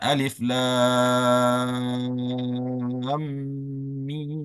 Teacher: Mi-nya juga dipanjangkan selama 6 harakat